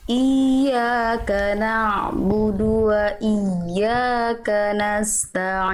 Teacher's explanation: Ain sukun jangan terlalu mengalir jangan terlalu kuat jadinya nabudu dia tawasud sedikit aja alirannya